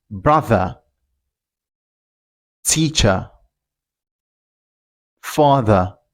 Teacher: If you want to pronounce this word in Britain, you don't pronounce the R.